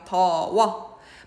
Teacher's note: 순경음 비읍도 반모음 우로 바뀌어서 워가 된 거예요